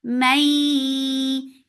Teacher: This is idgham with gunna. So keep the sound in your nose for a longer time.